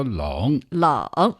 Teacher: yes that is a third tone and it means cold okay third tone meaning down and up down and up